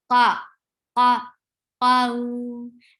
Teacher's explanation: You give a sufficient time on fatha, qa, qa, qaw, and keep qaf heavy because this is heavy letter. Qaw, and give ow sound at the end. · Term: lean letters